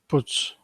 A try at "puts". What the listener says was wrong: Puts, not pits, puts.